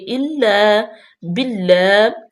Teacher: اللہ کے لام سے پہلے زیر ہے تو یہ باریک بھی پڑھی جائے گی